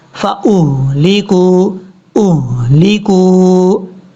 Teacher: حمزہ کو جب ہا کے ساتھ ملائیں گے یہ ہا بھاری ساؤنڈ کے ساتھ پڑھا جائے گا، اس کو بریک نہیں پڑھنا